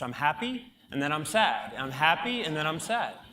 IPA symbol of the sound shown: æ